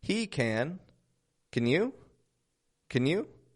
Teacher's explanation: super quick dropping the A out just a quick can